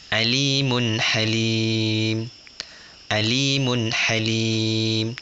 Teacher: jelas tanpa didengung bermakna tidak dengung panjang tidak ada pendek dan jelas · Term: izhar halqi